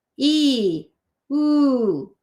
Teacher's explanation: It's very similar. My tongue is in a very similar position on ooh than it is on E.